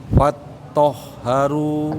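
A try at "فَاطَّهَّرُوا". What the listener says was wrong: Agak bawah, Pak. Itu kha itu malahan. Fatahharu. Tahharu. Agak didalamkan ya. Huruf H biasa, lemah.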